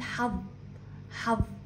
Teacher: اما عند النطق حرف في الظاء اللسان يخرج من الفم